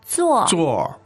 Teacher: now again, the verb to sit is 坐. 坐, and it's the fourth tone.